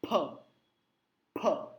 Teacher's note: अब हाथ रखिएगा, जबरदस्त हवा का झोंका आएगा। फ, होठों को टच करना है।